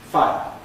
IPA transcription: faɪ̯ə̯